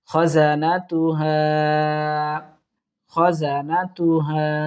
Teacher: মধ্যে মুনফাসিল ৩ আলিফ পরিমাণ টানবো